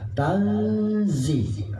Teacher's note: Tanzi, bukan tan, tapi samar itu nun itu melebur kepada huruf zah. Tanzi, nggak jelas nunnya, nggak boleh baca tan ya, tapi melebur antara huruf ta, nun dengan za. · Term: samar-samar